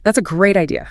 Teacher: I heard the pitch go up on Great. It peaked there and then it slid down gently on idea.